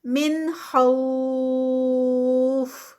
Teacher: من اظہار ہوگا یہاں پر کیونکہ آگے خا آ گیا ہے حروف حلقی میں سے